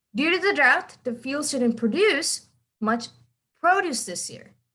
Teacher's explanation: the first word here is produce which is a verb that's where you are emphasizing the end the second one is a noun so you're emphasizing the beginning